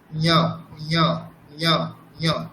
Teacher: তারপরেই আছে চ বর্গের পঞ্চম বর্ণ, ঞ ঞ ঞ ঞ, তালুতে হবে, তার সাথে নাসিকা